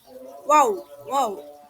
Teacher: Wau itu mengangkat bagian belakang lidah ke talam sehingga hampir menyentuhnya. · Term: huruf waw